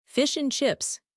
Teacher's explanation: If you try to pronounce the D, fish and chips, you sound very formal or like you are reading a list. Dropping the D connects the two words into a single unit, a collocation.